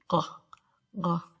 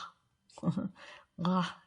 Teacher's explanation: The G is like a G sound, but that's made back in the back of the throat. G, G. And it's like a breathy G.